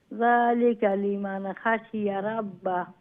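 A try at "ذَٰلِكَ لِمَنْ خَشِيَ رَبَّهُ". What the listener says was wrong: জি মাশাআল্লাহ।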